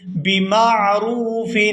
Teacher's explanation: یہاں را کو واو ساکن کے ساتھ ملائیں گے تو کھینچ کر ادا کریں گے۔